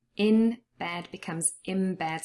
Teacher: So the N changes for an M. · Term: assimilation